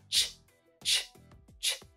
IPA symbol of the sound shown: tʃ